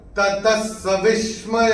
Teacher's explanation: तो ये जो त के बाद विसर्ग के बाद का अक्षर है स, और विसर्ग के बाद जब स आएगा तो विसर्ग का उच्चारण होगा आधा स। तो ये विसर्ग को आप अपनी किताब में स्ट्राइक ऑफ करके यहाँ पे आधा स ऐसे लिख के रख सकते हैं।